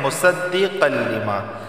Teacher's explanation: تنوین کے بعد لام آیا ہے تو صرف ادغام ہوگا، غنہ نہیں ہوگا۔ لما الف سے پہلے زبر آیا ہے تو اسے 1 الف کے برابر کھینچ کر پڑھا جائے گا۔